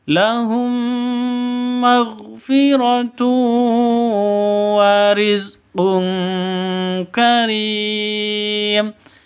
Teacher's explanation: Tanwin bertemu dengan kaf, samar didengungkan, siap-siap huruf kafnya